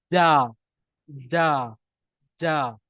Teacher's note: Tengah lidah tu mesti naik ke atas. Jangan bagi hujung lidah naik. Tengah lidah tu naik. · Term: huruf ja